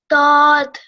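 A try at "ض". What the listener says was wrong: Just slightly thicker, slightly heavier. Dod.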